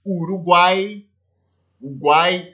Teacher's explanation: três vogais fazem parte da mesma sílaba